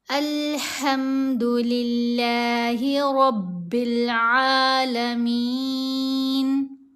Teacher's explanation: ہا کی جو آواز ہے گلے کے درمیان والے حصے سے اس کو ادا کیا جائے گا، خم نہیں پڑھنا۔